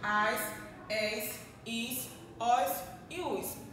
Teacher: O S, ao pronunciar, ao falar, não há vibração nenhuma nas cordas vocais. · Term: consoante S